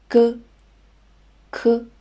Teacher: on va utiliser vélaire, c'est la partie postérieure de la bouche